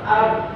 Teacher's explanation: Kalau di satu sifat, di satu huruf sifatnya ada jahar dan syiddah, pasti bakal timbul ada pantulan. Ab, suaranya tertahan, nafasnya tertahan, suara dari nafas tertahan, maka timbul pantulan. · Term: sifat qalqalah